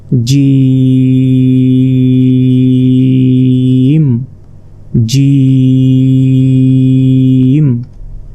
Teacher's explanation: এই জিমকে 4 আলিফ পরিমাণ টেনে পড়তে হবে, অর্থাৎ 4 সেকেন্ড আপনাকে টেনে পড়তে হবে। জিম জিম। জিমটি উচ্চারণ হবে জিহ্বার মধ্যভাগ, তার বরাবর ঠিক উপরে তালুর সঙ্গে লাগিয়ে, জিম জিম।